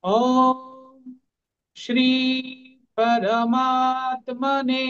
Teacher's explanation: সংস্কৃত একটা জিনিস খেয়াল করবেন, যেগুলোতে দীর্ঘ মাত্রা থাকবে সেই অক্ষরগুলো দীর্ঘ সময় মানে দুই কাল উচ্চারণ হবে। এই শ্রী আছে দীর্ঘ ইকার, এটা একটু দীর্ঘ উচ্চারণ হবে, এবং আরেকটা গি আছে এটাও দুইবার উচ্চারণ হবে, এবং তাটা যে আছে এটাও একটু দীর্ঘকাল উচ্চারণ হবে।